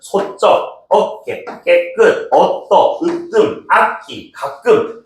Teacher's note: 다 모음 사이에 오는 된소리